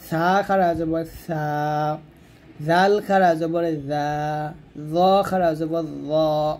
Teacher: সা জাল জ, জিহ্বার আগাটা উপরে দাঁতের আগা লাগিয়ে উচ্চারণ করবেন। সা খারা জবর সা, জাল খারা জবর জা, জ খারা জবর জ মোটা করে।